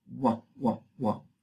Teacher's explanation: tiene una doble articulación tanto los labios como el velo · Entonces una doble articulación y aquí se pierde el elemento velar. Eso lo deja simplemente bilabial